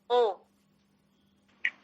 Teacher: कंठ और ओष्ठ दोनों के सहयोग से बोला जा रहा है ओ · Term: कंठोष्ठ